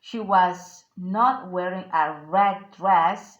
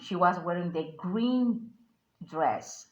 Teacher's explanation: the emphasized word should be red and green